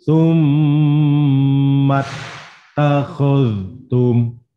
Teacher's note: Summa mimnya tasdid, saddah, nyebutnya boleh saddah, boleh tasdid, boleh siddah. Kalau mim bertasdid, maka dibaca gunnah, berdengung, gunnah musaddadah, berdengung karena bertasdid.